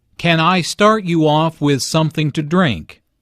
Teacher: with something to drink notice how the question starts with can since this is a yes no question the intonation Rises at the end